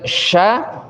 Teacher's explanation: sya itu tidak ditekan karena dia rokhwah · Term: huruf shin